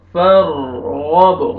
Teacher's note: پر کریں گے، را ساکن ہے، اس سے پہلے فتح، فَارْغَب، غین کو موٹا کر کے پڑھیں گے ، با قلقلہ سٹاپ کریں گے تو فَارْغَب، وَإِلَى رَبِّكَ فَارْغَب،